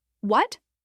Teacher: Like you're genuinely asking a question. Let your voice rise a bit at the end.